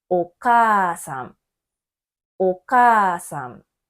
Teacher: 文字です。か、さ、た、な、は、ま、や、ら、わの母音は全部あです。例えば、夕方の場合、ゆの母音はうですね。その隣に母音のうがあります。母音がうの文字で、その次の文字がうの時には伸ばして発音をします。夕方、夕方。風船のふの母音もうです。ふの隣には母音のうがありますから、ふも伸ばして発音をします。風船、風船。では、お母さんはどうでしょうか？ お母さんのかの母音はあです。隣には母音のあがあります。だから伸ばして発音をします。